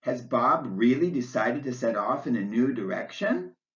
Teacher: your voice rises and keeps on rising on the word direction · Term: rising intonation